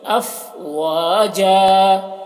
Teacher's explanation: ساکنہ ہے تو جھٹکا لگے گا، اس طرح، فتأتون افواجا، دیکھیے فا ہے تو اس کی ہوا کے ساتھ میں اس کی آواز نکلتی ہے